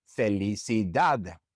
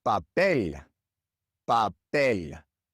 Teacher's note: the stress naturally falls on the last syllable.